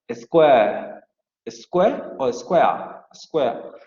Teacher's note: Y la palabra square se va a pronunciar con un diptongo, con estas dos vocales, con la vocal semicerrada anterior no labializada y la vocal media, square, square, como lo hemos visto hasta ahora, o con la vocal semiabierta anterior no labializada alargada, square, square o square, square.